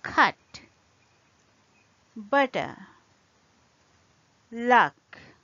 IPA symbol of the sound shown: ʌ